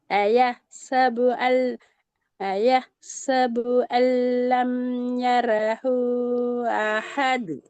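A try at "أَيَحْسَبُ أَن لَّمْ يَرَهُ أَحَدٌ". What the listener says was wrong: இன்னும் கொஞ்சம் ஹாவை நீட்டுக்கும். ஹாவை 3 செகண்ட் நீட்டுக்கும். யரஹு அஹது.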